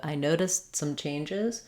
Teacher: it I noticed that so when I'm saying I noticed that I'm going to just use an unreleased T not even say that t sound stop it and go right to the consonant that or notice